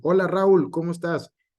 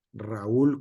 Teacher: en la pronunciación correcta de ese nombre el acento va en la u la sílaba fuerte y por lo tanto este se dividen en dos sílabas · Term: hiato